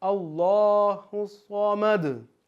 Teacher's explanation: कलकला दाल की आवाज़ लौटानी है